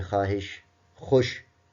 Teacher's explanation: اسی طرح واو مجہول جب پوری آواز نہ دے اور خوف لفظ ہے تو واو پوری آواز نہیں دے رہا. اسی طرح واو معدولہ جب واو آتا تو ہے لیکن پڑھا نہیں جا رہا ہوتا